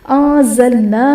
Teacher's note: انزلنا میں نون ساکن کے بعد حروف اخفاء میں سے زا آ رہا ہے تو یہاں پر اخفاء کا قاعدہ ہوگا، یعنی نون ساکن میں ہم غنہ کریں گے۔